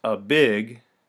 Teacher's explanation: when you say the words a big you naturally speak in iambic rhythm · iambic rhythm contains a measure of two beats the first unaccented and the second accented